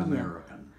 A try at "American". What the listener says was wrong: It's just that you were saying it too fast.